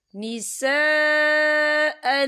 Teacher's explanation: تو ہم اسے 4 حرکت کے برابر کھینچ کے پڑھیں گے۔ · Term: مد متصل